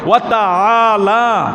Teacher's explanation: আইন এখানে হামজা না, আ বললে হামজা হয়ে যাবে, হামজা বললে অর্থের পার্থক্য হয়ে যাবে। এখানে আইন ওয়াতাআলা, কণ্ঠনালীর মূল গোড়া